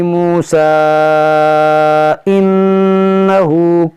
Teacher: मिलाएंगे तो हम यहाँ मद्दे मुनफसिल होगा, खींचेंगे